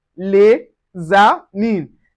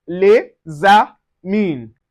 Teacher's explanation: Separately, the S in les is silent, but together, it is pronounced les amis. The S sound like a Z, which is Z.